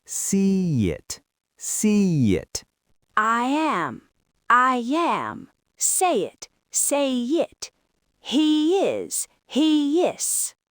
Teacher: >> Now connect it to the word it. As your mouth moves from the wide E position to the relaxed I position, it naturally creates a Y sound.